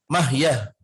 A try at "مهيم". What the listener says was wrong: میم ہے مهيم